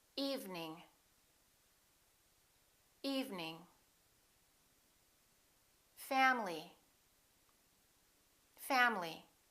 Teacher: each one of these words contains one vowel one syllable which is not pronounced